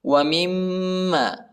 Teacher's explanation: دونوں ہونٹوں کو ملانا ہے اور غنہ کرنا ہے۔